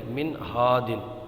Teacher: نون ساکن کے بعد حروف حلقی کا ہا آیا ہے تو یہاں پر اظہار ہوگا، غنہ نہیں کریں گے